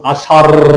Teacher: এদের উচ্চারণে জিহ্বার অগ্রভাগে, জিহ্বার অগ্রভাগে কঠিন তাড়নার সৃষ্টি হয়, যেমন আষাঢ় কঠিন হয়, এই জন্য বলে তারণজাত। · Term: তারণজাত বর্ণ